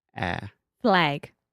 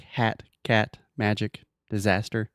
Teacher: it's a very open and front sound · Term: the a sound